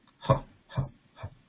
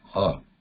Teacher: Now the visarga, this sound is breath sound, pure breath, without any vibrations in it, like it's like a whispering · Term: visarga sound